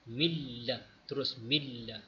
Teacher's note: Ini idgham bila gunnah, tidak ada dengung.